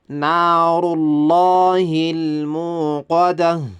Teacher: ራውም ይወፍራል አላህ የሚለውን ቃል ይወፍራል